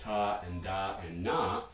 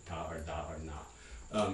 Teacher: Just behind that, we can talk about alveolar sounds. Those are the sounds that you make with your tongue tip near or touching your alveolar ridge, as in English ta and da and na, but not Spanish or Russian ta or da or na.